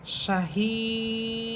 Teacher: তাহলে আমরা উচ্চারণ করব শাহিদ দেখেন আমি তিন আলি পরিমাণ টানতেছি দালকে সাকিন করতেছি দাল হরফে কলকলা হচ্ছে